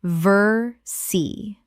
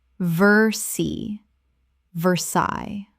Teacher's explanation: Two syllables only in English and the les are completely silent.